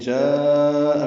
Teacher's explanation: جاء میں مد متصل ہے، الف مدہ کے بعد حمزہ آنے کی وجہ سے، اور مد متصل کو ہم 4 حرکات سے زیادہ لمبا کرتے ہیں